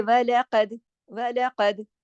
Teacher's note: قاف موٹا بھی ہے اور دال پہ کلکلا ہو رہا ہے